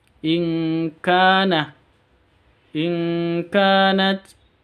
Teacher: nun sukun bertemu dengan kaf samar disertai dengung 3 ketuk. Ka panjang karena alif diawali dengan fathah.